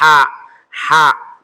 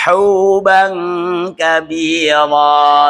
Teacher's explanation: Perhatikan khusus keluarnya dari tengah tenggorokan dan memaksimalkan yaitu keluarnya hamas atau anginnya tampak keluar sekali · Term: huruf H